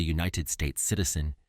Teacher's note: Even though the word united starts with a vowel in the sentence, he's a United States citizen, it makes a consonant Y sound, so we use a.